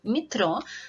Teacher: letter E is not stressed, because the stress in this word follows on the last syllable, metro. And it can be pronounced as wide E sound, like in tennis, because in this case the letter E is actually part of the syllable that is stressed.